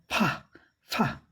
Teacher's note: घर्षण होता है स्वर तंत्र में और फा ऊपर वाला दांत नीचे वाले होठ को टच करता है